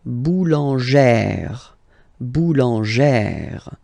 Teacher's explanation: Remember, when you've got this e plus this accent grave, you pronounce it like eh, really open eh sound